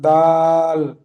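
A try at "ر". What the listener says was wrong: দাল নয়, দালের এদিকটা ঠিক এমন গোল ডাউন থাকবে। এখানে র, এই শেষের দিকের লেজটা আরেকটু উঁচু থাকলে দাল হতো। আর র, যার আকৃতি ঠিক এমন হবে।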